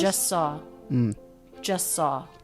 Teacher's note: these two words link together with just a single S sound. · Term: drop the T